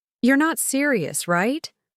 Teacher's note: Her voice started high on your, dropped down on not serious, and then shot back up on right.